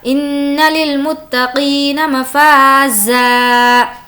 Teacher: ان نون پر تشدید ہے, غنہ ہوگا